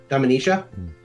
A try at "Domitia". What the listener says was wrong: There's no N. Domitia.